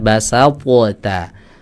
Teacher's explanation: huruf tho ketemu huruf ta itu enggak diqalqolahkan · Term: idgham mutajanisain